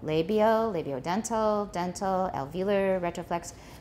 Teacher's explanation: it's okay to have a falling tone on each one they're very separate that way but native speakers will usually rise so we'll go labial labiodental